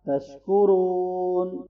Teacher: रा मोटा है और वाव मद्दा है